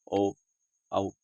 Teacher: ओ और औ जो दो स्वर हैं आप देख पा रहे हैं, खुद बोल के अगर देखें तो आपको आवश्यकता पड़ेगी या समझ सकेंगे आप, ओ औ। तो इसमें आपको कंठ की आवश्यकता पड़ती है और ओंठों की आवश्यकता पड़ती है। अगर आप इसमें देखें कंठ से बोल के देखें, अगर बिना ओंठों के हिलाए डुलाए, ओ औ तो आप नहीं बोल पाएंगे बिना होठों के गति किए हुए। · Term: कंठोष्ठ